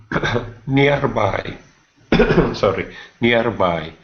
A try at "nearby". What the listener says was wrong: Okay, watch your R sound. Instead of saying nearby, it's near. Nearby.